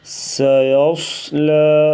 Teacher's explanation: صاد کو پر پڑھیں گے اور لام کو باریک پڑھیں گے